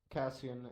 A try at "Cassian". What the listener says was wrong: He wants an SH sound instead of an S sound. Cassian instead of Cassin.